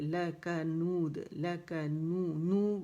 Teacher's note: اور یہاں پہ ہمارے پاس اگین مد صلہ صغرا ہے، پھر لکا نود، لکا ایک کاؤنٹ اس کو دیں گے، لکا نہیں کریں گے، لکا نود، لکا نو واو مدہ ہے، 2 کاؤنٹ کے لحاظ گول ہوگی، ٹھیک ہے، ہونٹ مکمل رول ہوں گے، اور جب دال پہ آئیں گے یہاں پہ ہم نے قلقلہ کرنا ہے باریک والا، کیونکہ یہاں پہ ہم کیا کریں گے یہاں پہ ہم نے اس کو ساکن کر دینا پڑھتے ہوئے، شکل یہی رہے گی لیکن ساکن کر دیں گے، ٹھیک ہے۔